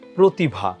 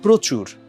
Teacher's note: এর আগে র ফলা যুক্ত যে অটা আছে সেটা হচ্ছে সংবৃত্ত হয় মানে ও এর মত উচ্চারণ হয়